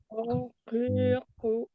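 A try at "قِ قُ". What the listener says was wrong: Nah, ini malah nah, dibulatkan anti aja mulut saya mulutnya. Gitu ya. Jadi ya tidak perlu kita bulatkan eh, bibir ko gitu ya. Ini berarti tidak mudah ya pengucapannya. Sedangkan ilmu tajwid itu harus terpenuhi ya dia ringan ya. Ringan, mudah atau ringan diucapkan.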